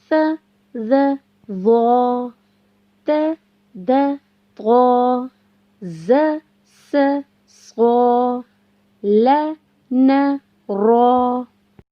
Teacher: ये 12 हुरूफ जुबान के आगे यानी जुबान की नोक से अदा होते हैं · स, ज़, ज़ौ को जुबान की नोक को ऊपर के 2 दांतों के सिरे से लगाकर अदा किया जाता है। और बच्चों, इन तीनों हुरूफ को हमने नरमी से अदा करना है।